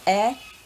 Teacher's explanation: this sound air starts with the sound e like an elephant so open your mouth relax your tongue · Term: diphthong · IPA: eə